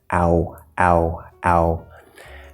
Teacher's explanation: starts with a, ends with u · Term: diphthong